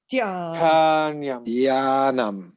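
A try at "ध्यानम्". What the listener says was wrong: No, I think the aspiration DH is not coming up. Dhyanam. Dhyanam. Aspiration. Dhyanam.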